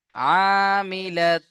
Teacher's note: প্রথমে এক আলিফ গুন্না হবে তারপরে এক আলিফ টান হবে